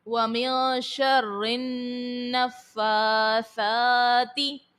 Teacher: رو کے نیچے زیر ہے، رو کو باریک پڑھیں گے، اور نون مشدد ہے، نون مشدد کو ہمیشہ غنہ کر کے ادا کرتے ہیں